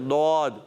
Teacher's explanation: زبان کی کروٹ اور اوپر کی داڑھوں کی جڑوں سے حرف ضاد ادا ہوتا ہے